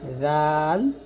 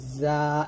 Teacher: জাল লাগবে জিহ্বার আগা উপরের দাঁতের আগাতে আর যা লাগবে জিহ্বাটা নিচে দুই দাতের মাঝে